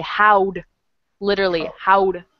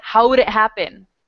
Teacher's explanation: We're not saying how did really fast. We're taking off the di, the di, and we're just putting the d there. We say how'd, literally, how'd, like that.